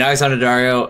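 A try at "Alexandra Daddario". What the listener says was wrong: Is it Alexander or Alexandra? So she goes by Alexander? Oh, I keep hearing you say Alexander. Alexandria.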